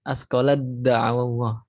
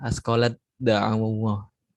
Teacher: Taknya melebur ke dalam dal.